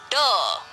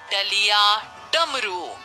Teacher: ड मूर्धन्य ध्वनि है। इसके उच्चारण में अंदर से आती वायु जीभ की नोक द्वारा मूर्धा को छूकर रुकती हुई बाहर निकल जाती है। जीभ की नोक मुंह में ऊपर के जिस हिस्से में टकराती है उस हिस्से को मूर्धा कहते हैं।